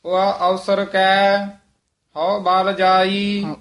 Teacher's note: ਊਆ ਨਹੀਂ ਕਹਿਣਾ ਉ ਛੇਤੀ ਬੋਲਣਾ